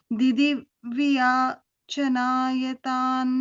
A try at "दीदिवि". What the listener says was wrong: Di divi. First di is a long di, second is a short di. So di divi